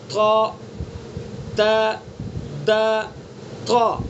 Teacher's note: تا کو کی جو صفت ہے وہ استعلا ہے، یعنی بلندی سے منہ بھر کے پڑھیں گے اس کو